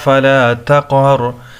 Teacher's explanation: فَأَمَّا الْيَتِيمَ فَلَا تَقْهَرْ، قاف وہی قلقلہ اس میں ہوگا کیونکہ قاف حروف قلقلہ میں سے ہے اور ساکن ہے، ایکو ساؤنڈ کی طرف پڑھیں گے